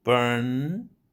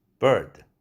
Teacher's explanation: 파열음으로써 유성음이지만. 그래서 burn 할 때 모음이 bird 할 때 비지속음이 왔을 때보다 더 길어진다는 것이죠.